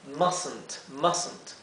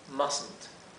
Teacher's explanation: idealmente no pronuncien esta E, traten de pasar de la S a la N